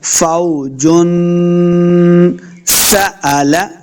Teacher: سین پہ سیٹی کی آواز آئے گی، لمبا بالکل نہیں کرنا، نہ ہی کوئی غنہ ہوتا ہے اس پہ، تو بغیر غنہ کے بغیر لمبا کیے ہوئے پڑھیں گے.